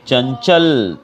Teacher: ये जो न का साउंड है वो हमारे नाक से आता है, तो इनको कहते हैं अनुस्वार।